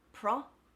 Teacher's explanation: The I becomes a schwa.